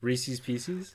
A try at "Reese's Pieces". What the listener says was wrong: Reese's Pieces? Ew, Reese's Pieces? You no, you can't just pronounce the second word wrong so it rhymes with the first word, which you're already saying wrong. It's Reese's Pieces, right?